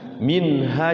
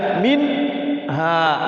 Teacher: kalau min itu jadi langsung setelah sukun masuk kepada huruf yang depannya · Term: izhar halqi